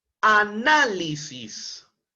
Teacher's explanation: la mayor entonación de voz en la sílaba na y como es una palabra esdrújula tiene que ser tildada obligatoriamente